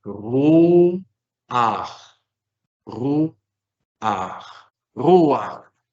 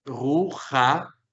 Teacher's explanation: Porque Lo que hace el pataj furtivum es que se vuelve como una especie de diptongo, como una especie de diptongo. Se une el sonido de shurek con el sonido de pataj.